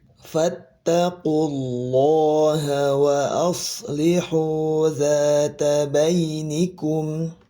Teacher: Kalau di sini lafaz Allah lamnya yang ini dibaca tafhim, dibaca tebal karena didahului oleh domah